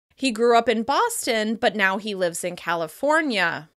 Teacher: You can hear that the words Boston and California receive similar levels of stress.